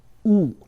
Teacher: in Mandarin, the U sound is a pure vowel, what we call in linguistics a monophthong. So it sounds something like U.